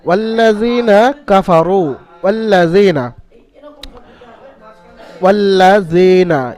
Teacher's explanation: ইয়া সাকিন ডান দিকে জালের নিচে জের আছে, ইয়া মাদ্দা এক আলিফ পরিমাণ টান দিয়ে, জালকে এক আলিফ পরিমাণ টান দিয়ে পড়তে হবে। জালকে টান দিলে তাহলে ইয়া মাদ্দার কায়দাটা পরিপূর্ণ হবে, কারণ এখানে ইয়া সাকিন ডান দিকে জের ইয়া মাদ্দা, আপনি জালের নিচে ইয়া, জালের নিচে জের, অর্থাৎ ইয়া মাদ্দার কায়দাটা জেরের সাথে সম্পর্ক।